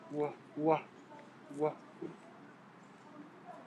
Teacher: It's a labial approximant.